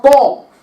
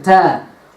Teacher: one is with the fullness of the mouth, Ta. One is a very light, empty letter, Ta. Ta, Ta. But the makhraj, or the makharij of both of these letters is one.